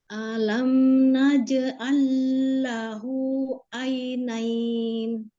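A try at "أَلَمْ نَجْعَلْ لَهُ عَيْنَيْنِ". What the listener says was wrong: Ulangi, di alamnya jangan alam, A-nya jangan naik langsung. Alam, alam, jangan alam, tapi alam naj'allahu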